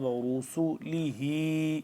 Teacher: را موٹا، سین سیٹی کی آواز